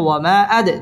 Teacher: ওয়ামা জবরের বাম পাশে খালি আলিফ, মদের হরফ, মদের হরফের উপর চিকন চিহ্ন, বামে হামজা, মধ্যে মুনফাসিল, 3 আলিফ টেনে পড়তে হবে। ওয়ামা আদ, দাল কলকলার হরফ, ধাক্কা দিয়ে পড়তে হবে।